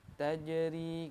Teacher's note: Untuk hukum tajwidnya di sini ada wahiyat tajri ya, jim ini berhukum qalqalah sugro ya. Jadi dia dipantul. Ingat hukum qalqalah sugro yaitu huruf qalqalah yang dibaca sukun di tengah kata ya.